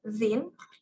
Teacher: Air is forced through our upper teeth and tongue. So it's become dental.